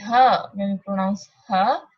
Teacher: voiceless you see that these are voice consonants only ha ha there is no vibration and it is voiceless